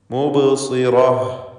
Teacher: ബാഇൻ്റെ സുക്കൂൻ ഖൽഖല സുഗ്റ നൽകി ശബ്ദം ഹറക്കത്ത് പോലെ ചലിപ്പിച്ച് വ്യക്തമാക്കുക.